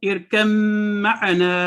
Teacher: آپ نے دیکھا کہ یہ کتب جد کا وہ ہے تو ارکب اگر ہم علیحدہ پڑھ رہے ہیں، لیکن یہاں پہ کیونکہ ہم ملا رہے ہیں تو با نہیں پڑھا جائے گا، میم پڑھا جائے گا، ارکم معنا۔